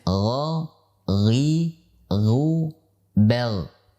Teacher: Makhraj daripada ghain itu di atas huruf ain, yaitu tenggorokan paling atas, ya, tenggorokan yang paling atas. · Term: makhraj huruf ghain